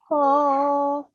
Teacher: So you round your mouth a bit and you read it from your throat.